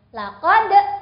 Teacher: huruf dal yang sukun termasuk qalqalah, jadi boleh ada E di belakangnya